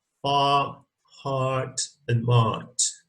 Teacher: This is a very low open vowel. It's back with the neutral position of the lips. That means that it's kind of relaxed. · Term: long open vowel